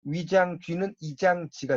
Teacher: 단모음 외와 위도 없어요. 이중모음의 의, 외도 없어요. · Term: 경상도 방언